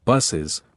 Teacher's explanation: The last s sound is pronounced again like z sound.